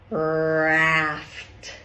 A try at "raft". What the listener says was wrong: I heard the, oh. That meant your tongue was down and your jaw was moving around, okay? In our position, tongue is up. Strong tongue. Raft.